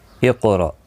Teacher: قاف ساکن پر قلقلہ ہوگا، قاف پر بھی پڑھا جائے گا، را زبر کی وجہ سے پر پڑھا جائے گا، حمزہ ساکن کو جھٹکے کے ساتھ پڑھا جائے گا